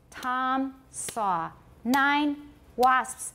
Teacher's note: Because we have no unstressed syllables to fill in the gaps between the stressed syllables, we pause.